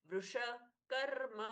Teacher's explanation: श आधा नहीं है वृष कर्मा श पूर्ण सुनाई दिया